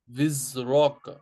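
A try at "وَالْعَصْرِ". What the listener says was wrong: यस, हाँ विज, जा को तेज पढ़िए, राल को नरम पढ़ेंगे,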